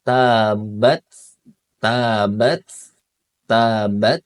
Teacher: ketika sukun dia hamsnya hamsnya itu harus ee mengalir